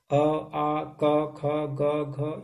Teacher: ये सारे जो है, ये कंठ से उच्चारण होते हैं।